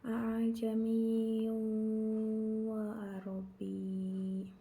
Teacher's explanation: Hamzah kedua dibaca tashil atau dipermudah membacanya dengan menempati makhraj antara alif dan hamzah.